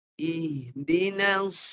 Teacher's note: Dia mati dengan desiran. Desiran tebal. Hujung lidah menyentuh belakang gigi bawah. Lepas tu tengah lidah dan pangkal lidah mesti tinggi.